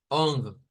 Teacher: una o nasalizada o sea que la hacemos más con la nariz